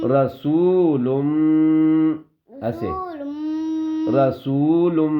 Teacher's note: نون کی آواز کو بھی ناک میں چھپائیں گے 1 سیکنڈ کے برابر